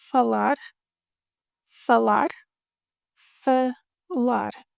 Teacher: A closed A followed by an open A.